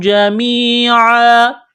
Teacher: جب یہاں پر وقف کریں گے تو دو زبر کی تنوین کو الف سے تبدیل کریں گے